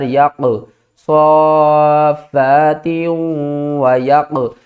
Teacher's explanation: قاف کے اوپر جزم ہے اور یہ ہے حروف قلقلہ، قاف کو ہم ہلا کر پڑھیں گے۔ کس طرح، یا قاف زبر یق، صافات و یق۔